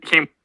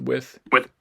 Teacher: And M is bilabial and wa has a labial element too.